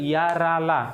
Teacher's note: या रा ला कहां आ देखो तालब मुर्धा और दंत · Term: अंतस्थ व्यंजन